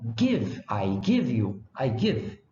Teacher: Quem estudou inglês, por exemplo, sabe que o GI em inglês, por exemplo, se lê com oclusiva velar. É o caso de give, é lido como give.